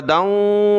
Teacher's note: دال کو آگے واو کے ساتھ ملایا ناک میں آواز پیدا کی دال واو دو زبر داؤں واو زبر وا داؤں وہدی ورحمۃ